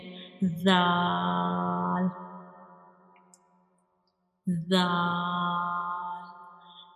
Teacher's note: When we pronounce zal, you make sure whistle sound does not come, because this is a soft letter and we read it softly